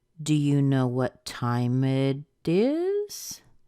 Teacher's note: do you hear that rise at the end that indicates the question the yes/no question and even though people might answer with it's three o'clock it